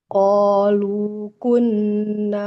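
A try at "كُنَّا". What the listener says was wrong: Kunna. Di sini nunnya fathah bertemu alif. Maka harus panjang. Kunna.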